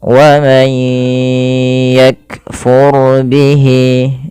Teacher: Di sini masukkan suara nun teman-teman awalnya waman yakfur. Ketika nun mati bertemu ya caranya tidak lagi dijelaskan karena kita di sini terjadinya hukum tajwid berupa idgham ghunah. Masukkan nunnya ke ya.